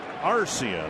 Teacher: The emphasis on the first syllable. On the R.